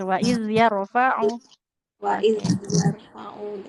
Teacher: Kemudian huruf zal sukun pastikan mengalir.